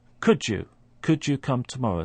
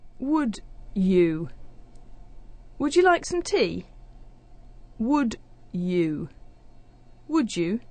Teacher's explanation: we have a d sound at the end of could and a y sound at the beginning of you. What happens is that those two sounds merge together and create a third sound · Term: assimilation